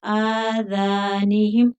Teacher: ذال کو بھی کھینچیں گے کیونکہ آگے الف مدہ ہے